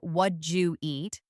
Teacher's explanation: The did and you blend and simplify. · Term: elision